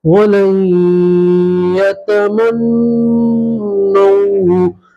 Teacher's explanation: نون کے اوپر تشدید ہے تو نون میں گننا کریں گے